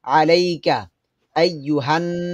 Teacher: এখানে গুণ হবে, নুনের উপর তাসদিদ আছে।